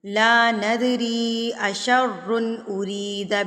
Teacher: اگر اگلے لفظ میں یہ والا حمزہ آ جائے تو اس کا مطلب ہے یہ چھوٹی مد ہے یعنی کہ مد منفصل ہے. اس کو آپ نے 3 یا 5 حرکات کے برابر کھینچ کے یعنی کہ لمبا کر کے پڑھنا ہے